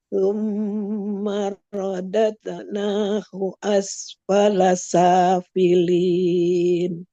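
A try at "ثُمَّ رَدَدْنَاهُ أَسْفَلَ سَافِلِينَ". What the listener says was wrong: Nah, ini tinggal tebalkan ro-nya. Rodade. Summa, M-nya ditahan dulu. Summa rodade.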